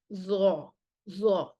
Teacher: आप देख सकते हैं डायग्राम में सबसे पहले ज़ौ को देखें, ज़ौ a letter with इस्तेला and इत्तबाक़। ज़ौ में इस्तेला भी है, इत्तबाक़ भी है।